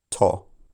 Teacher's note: For example, the word tor in its strong form has a long vowel, or, which if shortened would become to. I'm using a slightly lower vowel quality because the closest short vowel to or was o.